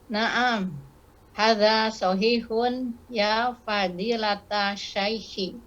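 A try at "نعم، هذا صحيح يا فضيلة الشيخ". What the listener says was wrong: Mumtaz.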